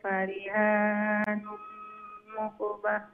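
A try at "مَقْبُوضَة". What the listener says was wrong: মাকবুদাহ মিমর উপরে জবর মাকবুদাহ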